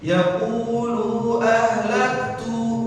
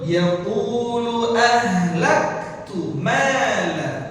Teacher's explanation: tu-nya di sini jangan dibaca panjang lagi